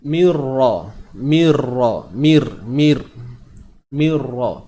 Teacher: Nun mati bertemu ra ni idgham bila gunnah. Masukkan tanpa dengung.